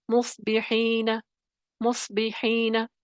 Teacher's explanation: صاد ہے دوسرے درجے کی تفخیم کے ساتھ